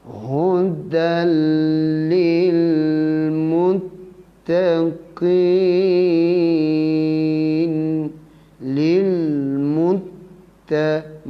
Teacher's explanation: Ketika berhenti di sini mesti panjangkan suara 2, 4 ataupun 6 harakat. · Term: Mad arid